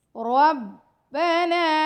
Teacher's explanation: ربنا را کو موٹا پڑھیں گے، با سے ملائیں گے، نون کے ساتھ الف ہے، 2 سیکنڈ کا ٹائم دیں گے